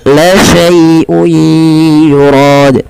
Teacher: lembutkan dalam melafalkan ya sukun yang di dalam dengan fathah karena dia ada bacaan lin, lembut di dalam melafalkannya.